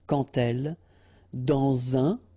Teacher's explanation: Remember, when you will have this D, you will phonetically pronounce it like T. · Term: liaison